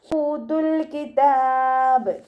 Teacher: ഹംസയുടെ കൂടെ വാവുമദ് വന്നിട്ടുണ്ട്, 2 കൗണ്ട് നീട്ടിക്കൊടുക്കുക.